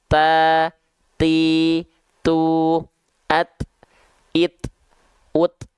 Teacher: huruf ta ketika dilafalkan dia hanya percikan nafas yang keluar